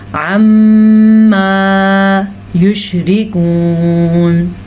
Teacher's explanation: میم کے اوپر غنہ کرنا ہے کیونکہ میم کے اوپر شد ہے. جب کبھی میم پر اس طرح کی شد آ جائے تو میم پہ غنہ کرتے ہیں.